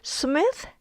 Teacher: Smith has an unvoiced th sound, so it becomes Sumisu.